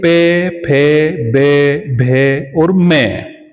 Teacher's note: होठों से उच्चारण हो रहा है, तो इसका उच्चारण स्थान होठ है।